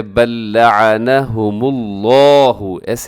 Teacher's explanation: لفظ اللہ کو ضرور موٹا پڑھیے گا کیونکہ لفظ اللہ کے لام سے پہلے میم کے اوپر پیش ہے، تو ایسی صورت میں لفظ اللہ کو موٹا پڑھا جاتا ہے، بل لعنهم اللہ، ایسے اپنے اس لفظ کو اپنے موٹا کر کے پڑھنا ہے۔